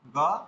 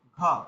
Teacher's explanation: অল্প প্রাণগুলোতে আপনার হাওয়া বাইরে আসছে না, মহাপ্রাণগুলোতে আসছে। অর্থাৎ মহাপ্রাণে আপনার বায়ুর মানে বেশি পরিমাণে প্রয়োজন হচ্ছে, আর অল্প প্রাণে কম প্রয়োজন হচ্ছে।